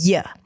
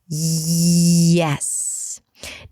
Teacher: the back of the tongue, or the body of the tongue actually, moves up and almost touches the upper palate in a way that makes you feel all these tingly vibrations. It's very close to G, but the tongue is moving more towards the back for this one.